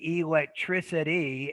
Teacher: you could even say electricity and make the T a flap